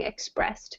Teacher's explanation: that is an example of a T sound for an ED ending